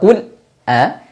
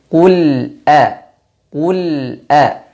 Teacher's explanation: sifat huruf lam dari sisi suara adalah bainiah atau tawasud suaranya dialirkan sedikit